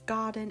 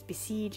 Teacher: a trochee, having emphasis on the first syllable